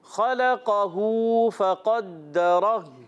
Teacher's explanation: فقدرہ میں قاف کو پر کریں گے، دال مشدد ذرا رک کر ادا کریں گے، را کو بھی پر رکھنا ہے، اور وف میں ہا کو، ہا الٹا پیش ہو نہیں پڑھیں گے، وف کرنے میں ہا کو ساکن کر دیں گے. پڑھیں گے خلقہ فقدرہ.